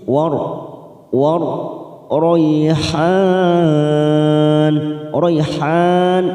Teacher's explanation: War rayhan, rayhan mat arid disukun 4 harakat, kita panjangkan